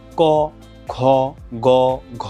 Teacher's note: জিহ্বার গোড়ার দিকে নরম যেই তালুর পশ্চাৎ ভাগ মানে পেছন ভাগটা এখানে আসলে স্পর্শ করছে, এজন্যই হচ্ছে এটাকে আমরা বলছি জিহ্বামূলীয় বা কণ্ঠস্পর্শ ধ্বনি।